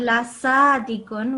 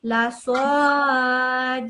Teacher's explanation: So you said it like a scene. You said la sadikun with your mouth open. You need to say it with your mouth rounded. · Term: round sod